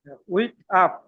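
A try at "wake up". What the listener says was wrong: উইক না বলে ওয়েক আপ। ওয়েক আপ, জাগ্রত হওয়া।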